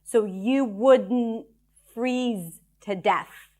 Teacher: Stress is on freeze.